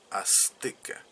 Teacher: se escribe con z pero no se pronuncia de esa manera se pronuncia como Azteca como s y es una s que es diferente a la que pronuncian los españoles